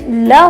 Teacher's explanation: जो ल होता है वो पार्श्विक व्यंजन होता है